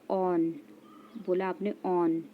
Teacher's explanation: कंठ और ओष्ठ इनके उच्चारण में क्या होता है, कंठ और ओष्ठ दोनों का प्रयोग हो रहा है